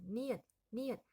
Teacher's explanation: 혀끝이 윗잇몸을 치죠. 그럼 치조음이면서 코가 울리는 소리 비음입니다.